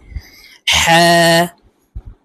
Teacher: হা হরফ হলকের মধ্যখান থেকে উচ্চারণ হবে, কারণ হার মাখরাজ হলকের মধ্যখান থেকে হবে।